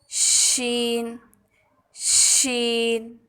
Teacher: درمیان زبان کو درمیان تالوں سے لگا کر باریک آواز میں ادا کریں